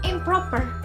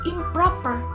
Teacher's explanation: morpheme in becomes im when preceding a bilabial consonant